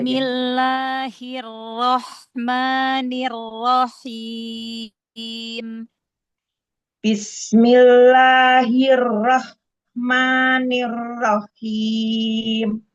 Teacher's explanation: Hati-hati, ha jangan masuk ke roh.